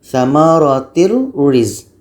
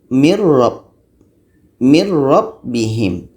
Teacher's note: Nun hilang masuk ke roh.